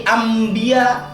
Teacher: Karena nun mati bertemu ba, nama saya jadi Ambiya. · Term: Iqlab